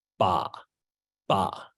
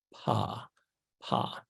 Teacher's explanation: the ba doesn't have a gap the Paw does have a gap · The ba doesn't have a gap. The pa does have a gap. Now that gap is very short, just tiny fractions of a second.